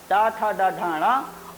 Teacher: तो इन वर्णों का उच्चारण स्थान मूर्धा होता है, और ये मूर्धन्य वर्ण कहलाते हैं।